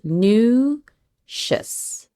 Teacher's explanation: That TR sound is going to be a tr, almost sounds like a CH.